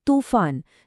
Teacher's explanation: जिसमें तू की ध्वनि लंबी है